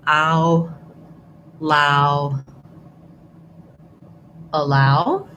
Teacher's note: In this case, you want ow, you move from a more open, unrounded to a more closed, lax rounded, ow. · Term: ow diphthong